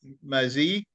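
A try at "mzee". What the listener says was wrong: Za, mze, not mzi, mze.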